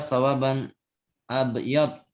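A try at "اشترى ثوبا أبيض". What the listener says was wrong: Bukan sawaban, sauban.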